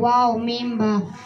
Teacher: 15 নম্বর মাখরাজ দুই ঠোঁট হইতে তিনটির উচ্চারিত হয়